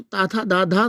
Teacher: जब जीवा जो है दांतों पे टच करती है तो ताथा दाधा सा आता है, तो दंत व्यंजन होता है